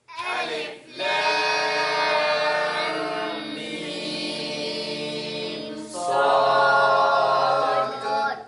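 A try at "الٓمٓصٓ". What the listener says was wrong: There's no break. There's no break between the letters. And when you get to the meme, your lips touch, but they don't press. So when you say lam, meme, you see that? Lam, meme. But you're not saying lam. You see there's a difference, right? The lips just touch. They just touch.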